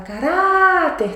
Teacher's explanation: Tá vendo que é o RA que é a mais forte? Essa é a sílaba tônica.